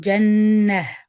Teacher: So the closed ta, when we stop on it, you change it into ha when you stop